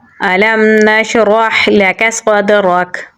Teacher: काफ को बारीक पढ़ेंगे, स्वाद को पुर यानी मोटा पढ़ेंगे और दाल के साथ मिलाएंगे। दाल पे हम कलकला करेंगे। रा को पुर यानी मोटा पढ़ेंगे।